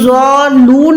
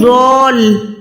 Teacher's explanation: पहले लाम को ज़ॉ के साथ मिला रही हूँ फिर लून पढ़ रही हूँ। अगर ज़ॉलून पढ़ेंगे तो वो लाम पे शद अदा नहीं होगी, ये भी बहुत बड़ी मिस्टेक होती है।